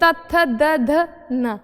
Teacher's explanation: यानी कि त थ द ध न बोलने के लिए हमारी जीभ दांतों से जाकर लगेगी, तो वो क्या हो गए, दंत व्यंजन हो गए।